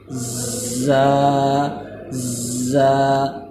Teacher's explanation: زبان کی پشت اوپر تالو سے تھوڑا سا ٹکراتی ہے اور زبان اکثر بیٹھی رہتی ہے۔